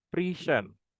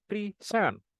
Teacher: For example, the word present as noun it is pronounced with the stress on first syllable, present. But as a verb, the stress shifts to the second syllable, present.